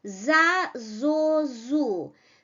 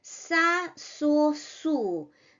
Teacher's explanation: Z is produced with voice. That's why such sounds like Z, D, B are called voiced consonants in Russian. And the next one, sound S, is voiceless. Voice is not used while producing the sound.